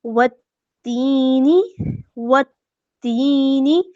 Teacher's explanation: تا ہے 2 دفعہ پڑھا جائے گا کیونکہ مشدد ہے